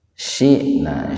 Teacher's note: huruf hamzah mati di tengah-tengah kata, itu hamzahnya dihentakkan Pak, jadi bukan dibaca panjang